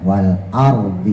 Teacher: Jadi a-nya tetap mangap. Nah, ro-nya itu yang kita monyongin, yang kita tebelin. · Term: rok sukun